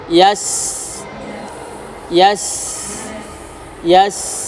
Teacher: sin sukun, yas berdesis dan mengalir